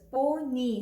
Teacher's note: Like in this word, we have two syllables, pony. So here this Y sounds like the long vowel E, pony.